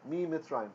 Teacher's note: the noon causes the mem to double, but the noon disappears. Just like in our example in English with in plus legal.